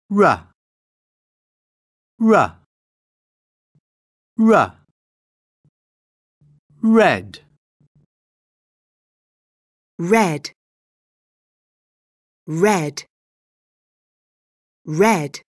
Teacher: Before beginning this lesson, you should already have practiced R as in red in the previous lesson and W as in when in lesson 5. Remember, R is formed by pointing the tip of the tongue above the ridge behind your top teeth, but not making contact, then bringing the tongue down quickly and adding voice. R, R, R. Red, Red, red, red.